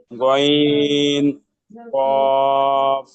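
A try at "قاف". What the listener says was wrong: কব না, এটা সিম্পল বলবেন, কাপ।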